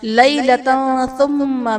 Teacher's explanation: لیلۃ ثم میں تا پر دو زبر کی تنوین، تنوین کے بعد حروف اخفاء میں سے تا ہے تو یہاں پر اخفاء کا قاعدہ ہوگا، یعنی تنوین میں ہم غنہ کر کے پڑھیں گے۔ ثم میں میم مشدد ہے، یہاں پر بھی غنہ کریں گے۔